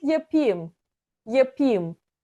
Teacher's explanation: We usually say yapayım, yapayım. So we almost eat that a in the ayım, yapayım. It almost sounds like if you will.